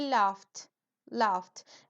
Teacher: esa gh final se pronuncia casi como una F